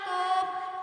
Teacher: 4 নম্বর মাখরাজ জিহ্বার গুড়া তার বরাবর উপরে তালুর সঙ্গে লাগায়া 2 নক্তা ওয়ালা কফ